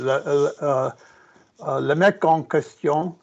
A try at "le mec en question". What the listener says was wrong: Mec went up. That was an upward inflection. Mec. Question. Nasal going down. Nice twangs. Crystal fucking clear.